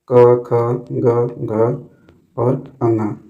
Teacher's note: इनका उच्चारण कहा से होता है कंठ से होता है